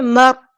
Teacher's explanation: را ہیوی موٹا پڑھنا ہے اور ہلانا بھی نہیں ہے